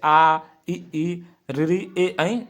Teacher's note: अव्रतमुखी मतलब ओंठ गोल नहीं होंगे